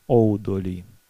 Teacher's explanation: Ну, например, если в словах, которые начинаются с «у» долгого, их не так много в чешском языке, этот «у» долгий в начале может меняться на дифтонг «оу»